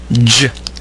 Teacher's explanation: is a palal affricate voice consonant unlike the Z hat check produce the J hat check Sound by briefly stopping the Air Stream and then releasing the articulator so that the noise is produced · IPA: /dʒ/